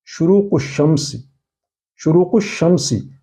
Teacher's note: شروق الشمس، اس میں آپ نے دیکھا کہ الف لام کا تلفظ نہیں ہوا، بلکہ شین پر تشدید لگا کر پڑھا گیا